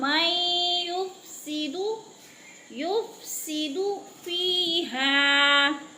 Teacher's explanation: نون ساکن کے بعد یا مشدد آ گئی ہے تو نون کو نہیں پڑھیں گے، میم کو یا کے ساتھ ادغام